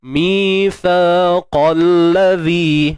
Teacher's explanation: Untuk sa ni tuan-puan keluarkan hujung lidah sikit je. Sama macam zal tadilah.